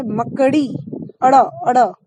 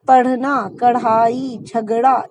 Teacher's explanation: तो जब आप अड़ा बोल रहे हैं तो जीभ पीछे जाकर आगे आ रही है, इसीलिए ये उत्क्षिप्त व्यंजन है। जीभ उल्टी होकर आगे की तरफ तेजी से आ रही है